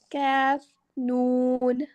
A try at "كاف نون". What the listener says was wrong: काफ नून, काफ को थोड़ा सा खींचिए।